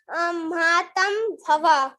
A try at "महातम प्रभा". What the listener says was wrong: भवा नहीं, प्रभा, है ना। महातम प्रभा, बहुत बढ़िया।